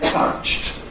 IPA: tʌʧt